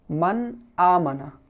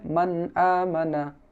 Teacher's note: এই নুন সাকিন বা তানবিন কে গুন্না না করিয়া স্পষ্ট করিয়া পড়িতে হয় ইহাকে ইজহারে হাকিকি বলা হয় তো আমরা জানলাম যে নুন সাকিন